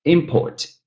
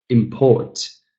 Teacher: Import, noun, first syllable. Import, verb, second syllable.